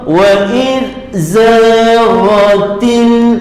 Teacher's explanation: Wa id zaghatil, til lam tanda sukun izhar infitah, terbuka, buka, til buka. Jangan diqalqalahkan, bukan, jangan didengungkan lam itu, hukumnya izhar qamari